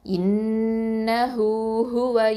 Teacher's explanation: இன்னஹு ஹுவ அப்படி இன்னஹு ஹுவ அப்படின்னு சொல்லக்கூடாது. இன்னஹு ஹுவ ஹூ 2 அலிஃப் நீட்டுங்க.